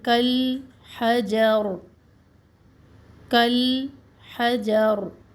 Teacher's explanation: रा को हम साकिन कर रहे हैं तो यह रा मोटी होगी